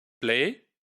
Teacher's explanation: So l is voiceless in play and it's by context.